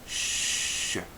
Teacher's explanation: this uses the tongue against the hard pallet at the back of the teeth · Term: sh sound, palatal fricative